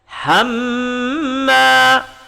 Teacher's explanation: Hamma panjang, dengung 2 harakat, disebut dengan wajibul hunnah. Dan dia makhrajnya berasal daripada rongga hidung ataupun disebut dengan al-khaysum.